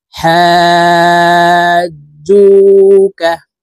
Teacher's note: জু এখানে এক আলিফ টেনে পড়তে হবে, কারণ পেশের বাম পাশে জিজমালা ওয়াও মদের হরফ, ডান দিকের হরকতকে এক আলিফ টেনিয়া পড়িতে হয়।